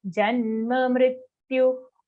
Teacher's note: Till mrityu, till the u sound, the sounds are all hrasva. Even the ja after that is hrasva.